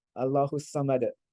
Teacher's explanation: Sa, Allahu Samad. And again, because it's the end of a word, you drop the last vowel, but because it's a dal, you sort of shake it a little bit.